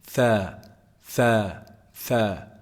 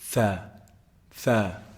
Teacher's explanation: Tha is actually pronounced from the tip of the tongue and the edge of the upper incisors.